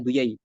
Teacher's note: Terkadang orang Arab mereka bilangnya duyai ya. Jimnya diganti ya.